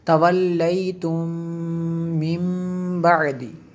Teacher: میم ساکن کے بعد دوسری میم ہے، یہاں پہ ادغام شفی ہے